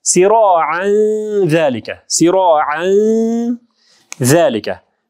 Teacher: Зәл харфы ичке тамға болғандықтан бұл жерде ихфа дағын ичке болады. Сироан дейсіз.